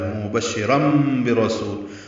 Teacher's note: وہ مبشرا برسول، یعنی رن کا جو نون ہے، تنوین میں جو نون ہوتا ہے اس کو میم سے بدل دیا، یہ اقلاب ہوا ہے